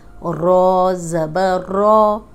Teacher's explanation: جب رو پہ زبر آ جائے گی تو رو موٹی پڑی جائے گی